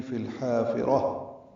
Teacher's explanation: فی الحافرہ میں لام ساکن پہ اظہار فی اور الحافرہ ملا دیا گیا. لام ساکن پہ اظہار قمری، حا الف مدہ وسط حلق سے ادا ہوگا، را پر پڑھیں گے اور تاء مربوطہ پہ وقف ہو جائے گا، ہا میں تبدیل ہو جائے گی.